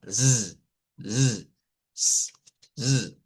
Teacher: la posición es en el alvéolo, la lengua hacia acá son sonidos fricativos. Los sonidos fricativos, el término fricativo viene de fricción, viene de fricción de aire que cuando sacamos el aire en esos generan fricción. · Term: S vibrante